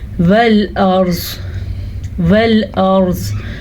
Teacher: را کو پر پڑھیں گے کیونکہ را ساکن ہے اور را ساکن سے پہلے زبر ہے، اس زبر کی وجہ سے یہ را پر پڑھی جائے گی.